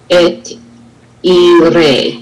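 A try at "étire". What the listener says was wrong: And if you don't stop on the consonant,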